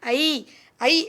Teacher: வாய் சற்று திறந்து நாக்கு முன்னால உயர்ந்த நிலையில இருந்து தாழ்ந்த நிலைக்கு செல்லும்போது உச்சரிக்கப்படும்